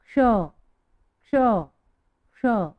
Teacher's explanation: क्ष। आधा क लेना है और फिर मूर्धन्य श।